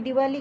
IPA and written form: dɪˈwɑːli (Diwali)